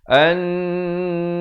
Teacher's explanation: an itu didengungkan 2 harakat, wajibul ghunnah.